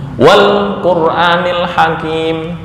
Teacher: ketika didahului dengan kata sebelumnya, ini nggak kebaca hamzah. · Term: hamzah wasal